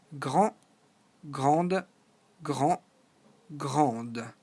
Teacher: As you know, in French, the last consonant, in this case the D or the S, are silent. So it only changes when we have the added E. In that case, we hear the D.